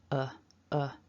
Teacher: we go weak we often rely on this schwa which is a nice soft weak uh rest the tongue in the mouth at the bottom there's no real tension there in the tongue so when we think about that word shall we just looked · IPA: /ə/